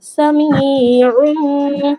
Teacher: এখানেও তানবিনের পর ইকলাবের অক্ষর বা এসেছে, তাই তানবিনকে মিম দ্বারা পরিবর্তন করে এক আলিফ পরিমাণ টেনে পড়া, এক আলিফ পরিমাণ গুন্না সহ টেনে পড়া।